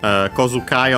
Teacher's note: Kozukai on its own is accented actually on the ko, on the first mora.